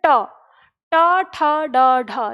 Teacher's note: जैसे आप ट का उच्चारण करेंगे तो आपकी जीभ जिस स्थान को छूती है मुड़कर, वही स्थान क्या कहलाता है? मूर्धा कहलाता है।